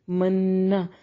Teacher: نون میں شدت پہ غنہ ضروری ہے